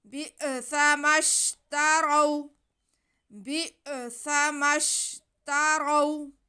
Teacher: واو ساکن سے پہلے را پہ زبر ہے تو یہ واو لین ہے اور را موٹا پڑا جائے گا کیونکہ را پہ زبر ہے۔